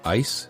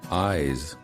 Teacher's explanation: The first word of the pair ends with the voiceless consonant and the second with the voiced one. Notice the difference in vowel length.